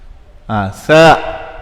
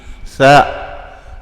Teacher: Si makhraj dia di langit, sa makhraj dia di hujung gusi. Sa, ataupun kalau kita ada menahan gigi, sa.